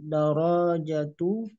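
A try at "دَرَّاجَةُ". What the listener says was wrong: Darro, rohnya bertasdid. Darrojatu.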